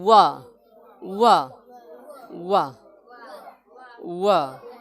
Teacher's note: दंतोष्ठ में दांत और ओठ का प्रयोग होगा